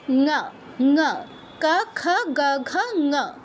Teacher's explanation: ক খ গ ঘ এই চারটা উচ্চারণের ক্ষেত্রেই সেইমভাবে জিওভার পেছনের অংশটা কন্ঠে টাচ করছে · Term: কন্ঠ বর্ণগুলোর